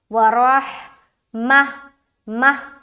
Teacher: گول تا پر جب بھی وقف کریں گے تو گول تا کو ہائے ساکینہ بنا دیں گے